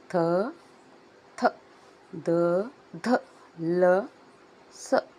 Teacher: ಹಲ್ಲಿನಿಂದ ಉಚ್ಚಾರವಾಗುವಂತಹ ಅಕ್ಷರಗಳು ನಾಲಿಗೆ ಹಲ್ಲಿಗೆ ತಟ್ಟಬೇಕು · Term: ದಂತ್ಯ ವರ್ಣಗಳು